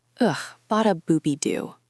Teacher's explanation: Disgusted falling tone. You were complaining. You were unhappy about something.